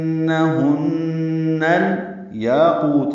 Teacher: تا باریک ہے، مرقق ہے صفت اس کی، تا نرمی سے ادا ہوگا